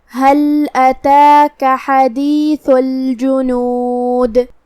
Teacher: ہا کو ہم حلق کے نیچے والے حصے سے ادا کریں گے اور اسے ظاہر کریں گے. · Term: حرف الہا